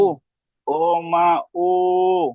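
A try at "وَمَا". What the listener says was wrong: ওমা উ বলে টান দিচ্ছেন, একটু খেয়াল করেন এখানে অত, আপনি অত মানে হুড়োহুড়ি করে পড়ছেন। ওয়াও জাবার ও, মিম আলিফ মাদ যাবার মা।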